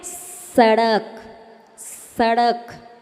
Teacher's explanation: दंती सा यानी जिसमें दांत से बोले